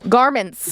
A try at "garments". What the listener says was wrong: N is silent. You sound like you're saying Garmin's, like the thing that No, the Garmin that used to be like a GPS thing.